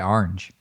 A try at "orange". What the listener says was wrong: It doesn't start with an A.